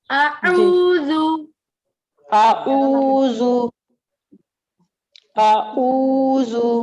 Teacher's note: دیکھیے حمزہ ہے وہ سینے والی جگہ سے ادا ہوگا, عین درمیان جی والے حلق سے, اور زال دونوں دانتوں کے درمیان میں زبان رکھیں گے وہاں سے